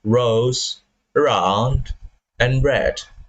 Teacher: The sound is created by the tongue tip almost making contact with the alveolar ridge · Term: alveolar frictionless